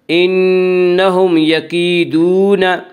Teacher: یا مدہ وہ یا جو ساکن ہو اس سے پہلے زیر ہو، یا مدہ کو ایک الف کے برابر کھینچ کر پڑھیں گے۔ یکیدون، واو مدہ وہ جو ساکن ہو اس سے پہلے پیش ہو واو مدہ کو ایک الف کے برابر کھینچ کر پڑھیں گے۔